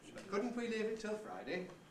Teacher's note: So high head, and low rise, and low bounce pattern.